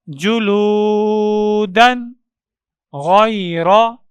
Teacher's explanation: تو چلیے، اس باکس کے اندر دال کے اوپر دو زبر کی تنوین ہے، اس کے بعد حروف حلقی میں سے غین موجود ہے. تو تنوین میں آنے والے نون کو ظاہر کر کے پڑھیں گے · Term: اظہار